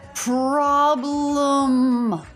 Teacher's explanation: The letter O makes the ah as in father vowel here, and the E is a schwa, problem, lum.